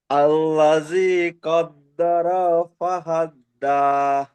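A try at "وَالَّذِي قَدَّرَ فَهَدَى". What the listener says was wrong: এখানে আবার আপনি ভুল করলেন, আল্লাদি পড়লেন, এখানে কিন্তু ওয়াল্লাদি আছে, দেখেন।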